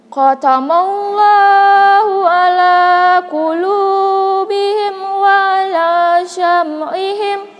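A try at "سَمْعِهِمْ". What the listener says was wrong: Jangan dibaca sya. Sam. S biasa. S sam. Sambalado, sam. Syambalado kan aneh bunyinya.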